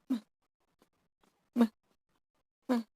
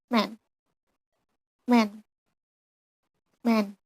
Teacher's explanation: M sound is nasal voice on labial place.